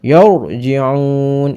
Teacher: Yarji'un, ini ada ro tafkhim, ya, karena sebelum huruf ro mati ini berupa harokat fathah, dibaca tafkhim tebal. Yarji'un, ini ada mad arid li sukun, karena ada mad tabi'i di akhir kalimat bertemu dengan huruf hiduf, dibaca panjangnya 5 atau 6 harokat.